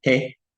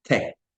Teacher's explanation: Una que se pronuncia con la lengua y el cielo de la boca, T. Y la otra que se pronuncia con los dientes